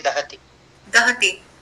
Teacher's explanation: ह्रस्व इकार है दीर्घ ईकार नहीं पढ़ना है